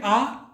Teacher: जब आप इसे साथ साथ में बोलेंगे आ, तो आप देखेंगे आपका मुख पूरा खुला हुआ है, यह आपका विवृत स्वर में आता है।